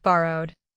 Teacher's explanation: Borrow ends with a voiced r sound, so the ending is d. Say borrowed with two written syllables, but one short d ending, not borrow id.